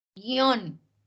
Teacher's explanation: Se mantienen juntas esas vocales, porque la I no tiene fuerza. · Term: Diptongo